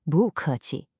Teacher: The character bu is normally a fourth tone, but when it comes right before another fourth tone, like in 客气, it changes to a rising second tone